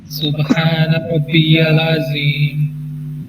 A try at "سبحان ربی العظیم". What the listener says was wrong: یہ آئین ادا کرنے کے چکروں میں نا آپ لام کو ہلا رہے ہیں. اس کا ایک حل یہ ہے, اس کا حل یہ ہے کہ آپ سبحان ربی ال یہاں پہ ایک چھوٹا سا پاز لیں اینڈ دین سے عظیم.